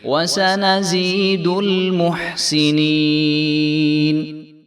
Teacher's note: وسنزيد المحسنين وسنزيد المحسنين جو ہے ہا کی آواز آنی چاہیے، اس کو ہم نے موٹا محسنین نہیں کرنا بلکہ محسنین محسنین، تو اس کو سینین بھی نہیں کرنے دینا کیونکہ سین کے نیچے زیر ہے، تو ہم نے سین کو لمبا نہیں کرنا بلکہ ہم نے نون کو لمبا کرنا ہے کیونکہ اس کے آگے یائے ساکن آ رہی ہے تو یہ یائے مدہ ہے، اس لیے جو ہے اس کو ایک الف کے برابر ہم لمبا کریں گے.